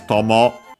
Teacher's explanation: actually the accent is on the first one